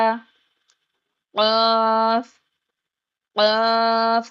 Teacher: قاف کو بھی 5 to 6 کاؤنٹ کھینچیں گے